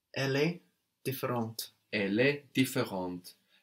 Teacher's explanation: So here we hear the T on the end now, because we have the E for the feminine on différente.